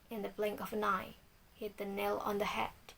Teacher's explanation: Anapestic. Unstress, unstress, stress.